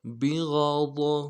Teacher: با کو نرم سے ادا کرنا ہے، غین کو موٹا کریں گے